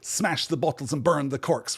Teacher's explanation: we are both beginning and ending each line of that poem with a strong stressed syllable